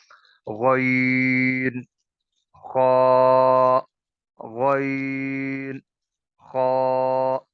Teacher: غین اور خا ہم سب ٹھیک ادا کرتے ہیں، لیکن ان کو پر کر کے پڑھنا ہے، موٹا کر کے پڑھنا ہے۔ یہ تھوڑی سی وہ کوشش کرنی ہے کہ منہ بھر کے پڑھیں گے تو یہ دونوں حروف موٹے پڑھے جائیں گے۔ · ادنا حلق سے، یعنی گلے کا ابتدائی حصہ جہاں سے پھر زبان شروع ہوتی ہے، زبان کی جڑ سے تھوڑا سا پہلے گلے سے ان کی ادائیگی ہوتی ہے۔ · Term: حروف مستعلیہ